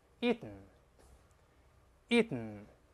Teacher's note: 遍，在书面语中一定用连写的这个形式，不要用▁can't，▁这个撇用在口语中可以，书面语中用不正式，也不要把它分开▁can▁空格▁not，那是口语中的强调句▁，You▁cannot▁do▁it。这个▁not▁跟前面▁can▁分开了，但只有联系到一块儿，这是书面形式，这▁cannot▁重音在前面。好，另外那个我们看这个▁Eaton▁老师读的时候呢，还有复习， 咱们用了一个鼻腔爆破▁，Eaton，▁但老师说过▁ten，▁还有▁den，▁读快了之后呢，顺鼻子就跑了。